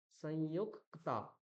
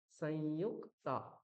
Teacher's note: তাহলে কয় তয়ের প্রথম যে অক্ষরটা রয়েছে ককার, তাকে দুবার উচ্চারণ করতে হবে। কিরকম, সংযুক, এই যে আমি ইউক ককার কয় হলন্ত বললাম সংযুক, তারপর আবার ক্তা, সংযুক্তা। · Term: দ্বিত্ব